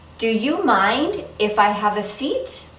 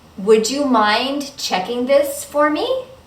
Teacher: when these are yes no questions you're going to use a rising intonation or with the voice going up at the end